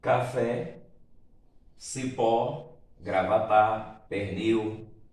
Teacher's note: vejamos o que que são palavras oxítonas como está aqui definido o acento tônico ocorre na última sílaba · se você separa em sílaba a palavra café aí você vai perceber que a sílaba mais forte é a última